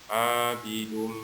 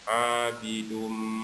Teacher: Kemudian setelah itu ada tanwin atau nun mati, ya tanwin bertemu huruf mim. Ini hukumnya idgham di gunnah, dia harus didengungkan. Abidum ditahan, didengungkan.